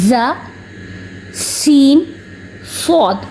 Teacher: 3 हरफ जिन्हें सीटी के साथ पढ़ते हैं, सीटी आवाज़ आनी चाहिए सीटी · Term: सीटी वाले हरफ